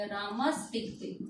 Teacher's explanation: इस विसर्ग के स्थान पर मूर्धन्य से हो जाएगा